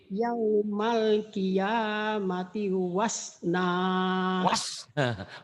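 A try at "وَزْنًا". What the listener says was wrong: Wasna melulu. Wazna Z ya Bu ya. Ya, hutang Z ya Bu ya.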